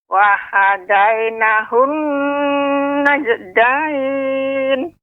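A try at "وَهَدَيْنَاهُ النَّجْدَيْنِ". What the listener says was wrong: Pada huruf na ini kurang tinggi Nek, kurang ditekan. Wa hadainahun najdain. Nah, ini pada qalqalah jim ini terlalu cepat Nek. Ya, jadi ketika kita membaca lambat, qalqalah juga melambat. Wa hadainahun najdain, tidak najdain, tidak seperti itu.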